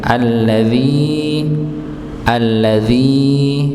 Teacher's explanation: alladzi dengan ya sukun sebelumnya kasrah pada kata alladzi maka dibaca dua harakat